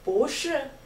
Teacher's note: Again, we have two fourth tones here 不 and 是